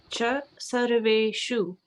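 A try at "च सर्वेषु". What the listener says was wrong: Yeah, so this S, I am feeling like it's sounding like SH as in shirt, but this one is S dot, which will be, but SH as in shirt, that is with the accent on top, which is you are pronouncing perfectly.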